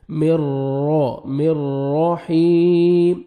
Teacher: مر را, را کو مرزبر ہے, را کو موٹا بھی کرنا ہے اور پر بھی کرنا ہے, را مشدد ہے